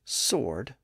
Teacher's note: we have S SW followed by o and in that situation the W sound was lost in the middle and today the standard pronunciation is sword without the W sound